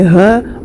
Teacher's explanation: ساتھ جلد ادا کریں گے، لئی، ہاں میں الف مدہ ہے، الف سے پہلے ہا کے اوپر زبر ہے، ایک الف کی مقدار کھینچ کر معروف پڑھیں گے